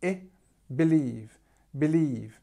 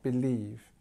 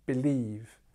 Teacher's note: the stress is on the second syllable of the word believe and this is a long e